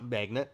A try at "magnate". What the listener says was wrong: Magnate. I think it's magnate because there's an e at the end. Not magnet.